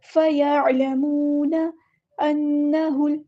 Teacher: نون پہ غنہ زمانی آ گیا تو ایک الف کے برابر رکیں گے، ہاں کو لام کے ساتھ ملا دیں گے۔